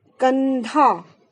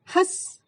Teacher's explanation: अनुस्वार का जब हम उच्चारण करते हैं तो जो हमारी श्वास है, जो हमारी सांस है, वो केवल नाक से निकलती है, लेकिन अनुनासिक में नाक और मुंह दोनों से